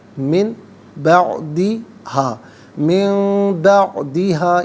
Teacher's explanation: نون ساکن کو میم سے چینج کر کے میم کی آواز کو غنّے کے ساتھ ادا کریں گے